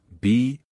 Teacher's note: a short burst of air followed by the long e sound